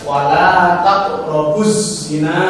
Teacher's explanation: Kemudian yang nomor 3 al-samsiyah, yaitu ada alif lam bertemu huruf za, salah satu dari huruf yang 14 ya, maka ini harus dimasukkan